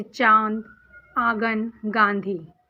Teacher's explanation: अनुनासिक, इनका उच्चारण नाक और गले दोनों से होता है, जैसे चांद, आंगन, गांधी। इनका उच्चारण हमेशा नाक से ही होता है, जिसमें नाक का उच्चारण हो वही अनुनासिक कहलाता है।